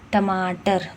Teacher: टमाटर तो हमारा तालू पे, मूर्धा जो होता है उस पर पड़ता है।